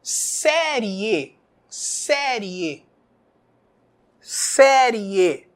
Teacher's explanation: tapei o nariz e não aconteceu nada Esse é um ditongo oral